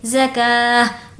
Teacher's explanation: اگر ہمیں یہاں پر وقف کرنا ہو تو گولتا کو ہم ہائے ساکنہ میں کنورٹ کر دیں گے